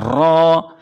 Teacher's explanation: اور را پڑھتے ہوئے ہماری زبان بھی یعنی ہونٹ گول نہیں ہونے چاہیے، را ایسے نہیں، را کو موٹا کر کے پڑھنا ہے، اور ایک الف کے لمٹ میں اس کو کھینچ کے بھی پڑھنا ہے